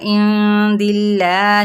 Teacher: اللہ باریک پڑھا جائے گا، دال کے زیر ہے